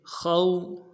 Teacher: خا کو موٹا کرنا ہے، واو کے ساتھ ملانا ہے، واو لین ہے بغیر کھینچے پڑیں گے